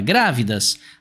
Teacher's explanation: Grávidas, a gente tem como sílaba tônica pra gente aqui a antepenúltima. E quando a nossa sílaba tônica é a antepenúltima, isso significa que essa palavra é uma palavra proparoxítona.